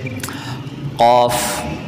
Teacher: اب ان کی تفصیل علم تجوید جب پڑھیں گے تب آپ سیکھ سکتے ہیں، لیکن چونکہ یہاں سوال جو ضاد کا ہے تو اس لیے ان 5 مخرج سے الگ الگ طریقوں سے ہر حرف کو ادا کیا جاتا ہے۔ جیسے قوف، جب آپ نقطے والا قوف ادا کرتے ہیں تو آپ کی زبان کی جڑ تالو کے اوپر نرم والے حصے سے لگتی ہے